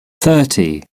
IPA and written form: ˈθɜːti (thirty)